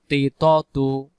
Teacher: জিহ্বার আগা থেকে মোটা করে পড়তে হয় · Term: ত অক্ষর